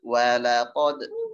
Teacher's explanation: Dan wawnya tipis, lam tipis, qaf tebal ya.